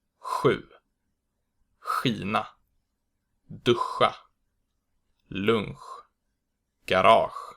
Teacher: The back SJ sound is pronounced h and is produced with the back of the tongue.